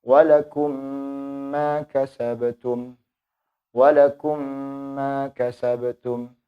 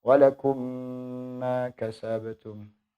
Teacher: Idgham mithlain itu hurufnya sama, hanya memiliki 1 huruf saja yaitu mim. Adapun cara membacanya dengan cara memasukkan mim mati yang pertama kepada mim yang kedua dengan dibaca dengung. Dibaca dengung kemudian ditahan dengan panjang selama 2 harkat, dengan panjang 2 harkat.